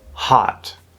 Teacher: Okay, so it's like this sound moved back, this sound, the ah, moved down, the lips go away, and we're left with just ah using the back of the tongue